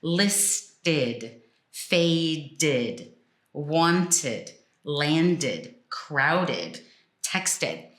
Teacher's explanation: any dictionary will tell you that the sound is ID short I